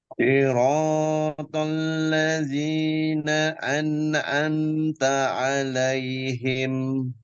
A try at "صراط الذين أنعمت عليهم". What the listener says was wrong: Si, si, anginnya kurang, ya, kurang pilek hati-hati, saya mendengar sedikit ada pantulan di bagian nun yang sukun. Jangan sampai an'am, tidak.